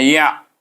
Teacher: Ya daripada rongga mulut pergi kepada tengah halkum. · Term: Huruf ain